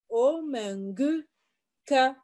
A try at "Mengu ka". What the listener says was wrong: Yaba, tu vois que toi-même, ça sonne maintenant bien dans ton oreille.